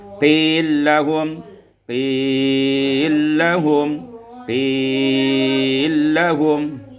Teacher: ini idghamul lam fil lam dengan idgham kamil, juga 3 wajah matnya.